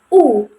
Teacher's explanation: Jadi, tinggi bawah dengan menggunakan lidah bagian belakang dan emm posisi bibirnya ini tertutup tetapi masih mendekati semi tertutup begitu. Jadi tidak sepenuhnya tertutup seperti U begitu. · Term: vokal U